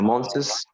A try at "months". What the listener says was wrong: لا month بس. الأس هنا ما بتتنطقش، يعني هي بتبقى مع التي اتش month، سواء مفرد أو جمع بننطقها زي بعض.